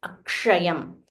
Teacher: this sh is a combination. It contains the Murdanya sh. So k plus ksha. · So it is k plus sh. It becomes ksha. So you have to roll your tongue and say Akshayam.